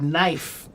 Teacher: we pronounce it without the K now, but originally the K sound was pronounced